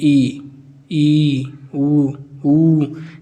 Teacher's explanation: तो इस बोलने पर हमारा मुह लगभग बंद ही रहता है